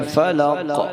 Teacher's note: قاف کو قلقلہ کرتے ہوئے یعنی قاف کو ہلا کر پڑھیں گے۔ قل اعوذ برب الفلق۔